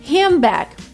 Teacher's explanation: D disappears, N is changed into M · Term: elision